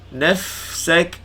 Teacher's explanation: huruf fa tu biar lawas, angin biar keluar. Ringankan.